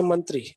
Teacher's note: in Hindi it has two syllables only and there is no stress or word stress upon any one of the syllables